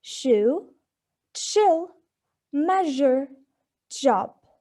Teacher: So these sounds are articulated by bringing the tongue near the hard palate, with the tip of the tongue being near the alveolar ridge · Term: palato-alveolar